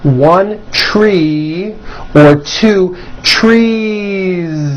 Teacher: It's not trees with an unvoiced S. It's trees with that voiced ending.